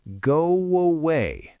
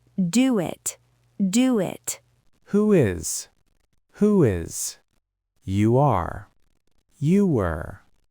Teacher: Because your lips are rounded, as they open up, they naturally create a W sound. Go away. Listen closely to that. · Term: W bridge